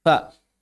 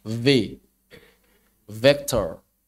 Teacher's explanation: F itu hams, V itu jahar.